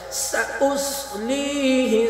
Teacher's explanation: سین اور صاد دونوں پہ سٹی کی آواز آئے گی لیکن سین باریک پڑھا جائے گا صاد پر کر کے پڑھا